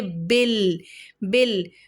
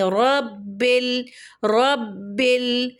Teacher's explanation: با کے نیچے زیر، اس کے بعد لام پر جزم نظر آ رہا ہے تو با کو لام سے ملائیں گے